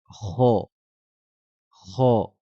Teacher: La différence, c'est qu'elle sera d'une intonation grave. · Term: la lettre ra